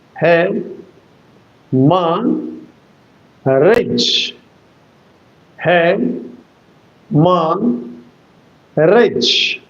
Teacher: you will give the accent on the first syllable